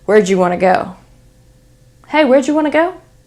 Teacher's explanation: this D sound next to this Y, commonly turns into a je